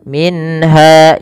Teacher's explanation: jelaskan suara nunnya ketika bertemu dengan ha karena ia izhar halki